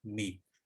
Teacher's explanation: بے کو جھٹکے سے بے اور میم کو ہونٹوں کو آپس میں دبا کے اور چپکا کے ہلکے سے آہستہ سے ادا کیا جائے گا